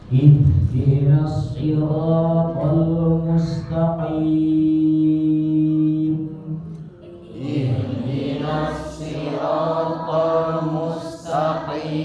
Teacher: Karena waqaf berarti kita sukunkan, ya, kita sukunkan mimnya dan i-nya dipanjangkan 4 atau 6.